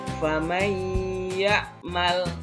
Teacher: nun mati bertemu dengan ya, berdengung. Faman ya'mal, ditahan dulu di hidung. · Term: idgham bi gunnah